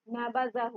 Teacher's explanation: जाल को अदा करने के लिए ज़बान के नोक को ऊपर वाली तरफ से किनारे से लगाइए